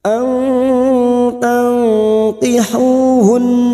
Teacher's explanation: Wa targhabuna an, ra sukun kita baca tafkim, ghabuna an. Nun sukun bertemu ta ikfa hakiki kita samarkan dan mendengung selama 2 atau 3 harokat.